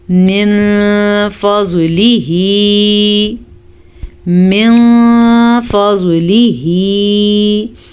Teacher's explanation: ہم نون ساکن کو چھپا کے غنے کے ساتھ پڑھیں گے